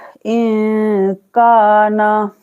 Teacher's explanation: नून की आवाज को हमें छुपा के पढ़ना है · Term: इक्फा